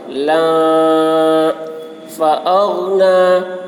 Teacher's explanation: غین میں قلقلہ نہیں ہوگا